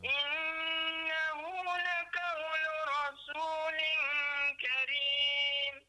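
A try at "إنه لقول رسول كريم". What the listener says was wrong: Baik, huruf qaf di situ. Laqau, laqau. Bukan lakau. Kalau lakau dia jadi huruf kaf. Laqau, qa, laqau.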